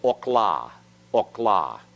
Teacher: the schwa is silent in this case because it closes the syllable